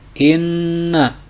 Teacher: huruf nun ditasdid membaca gunah harus didengungkan tiga harakat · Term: gunnah